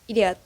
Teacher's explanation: Nah, bacanya lebih singkat idiot gitu ya. Tidak terdapat diftong O yang panjang bahasa Indonesia sehingga diftong tersebut menjadi vokal O saja. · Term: diucapkan lebih singkat